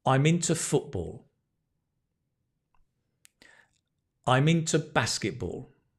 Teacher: say i am but when you're speaking it's i'm i'm and you'll probably connect i'm mint to i'm into · notice the stress is football football basketball stress on the first syllable there